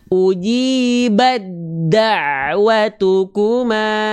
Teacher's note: Nah, ketika ada huruf yang sama makhraj tapi huruf ta dan dal itu walaupun sama makhraj, mereka beda sifatnya. Nah, berjumpa tuh huruf ta dengan dal, maka taknya dileburkan ke huruf dal.